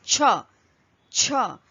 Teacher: you will feel a puff of air on your fingers and therefore this is the aspirated version of cha. Okay the Hindi word is starting with cha is chhatta chhatta which is umbrella. · So when again you keep fingers on your mouth and you speak this particular consonant as ch, ch, you will feel a puff of air on your fingers, and therefore this is the aspirated version of ch